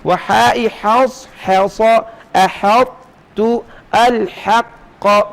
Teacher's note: یہ حص، حص، احط اور الحق کی ہا کو باریک کیجئے